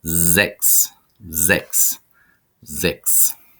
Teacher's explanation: Sechs is next, and you notice the S at the beginning of a syllable, followed by a vowel, makes a Z sound. So it's sechs, sechs, sechs.